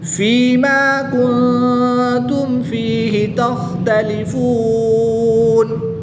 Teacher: نون ساکن کے بعد تا حرف اخفا میں سے ہے تو یہاں پر غنہ زمانی کر کے پڑھیں گے